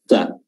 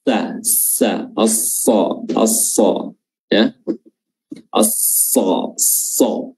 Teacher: makhrajnya adalah ujung lidah bertemu dengan ujung gigi seri atas dan bawah, sa, dan dia ditutup, giginya ditutup. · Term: huruf shad